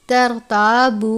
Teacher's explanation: ترتابو، الف سے پہلے زبر ہے الف مدہ، با واو پیش بو، واو ساکن سے پہلے پیش ہے واو مدہ، چھوٹی مد ہے، 2 یا 3 حرکات کے جتنا لمبا کر کے پڑھیں گے۔ ترتابو، اس طرح سے۔